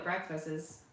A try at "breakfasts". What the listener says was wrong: added a few syllables to breakfast.